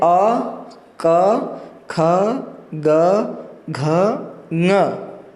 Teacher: अ क ख ग घ ङ तथा विसर्ग, ये जो भी वर्ण है इन सभी वर्णों की उत्पत्ति कंठ के स्पर्श से होती है। कंठ में से होती है।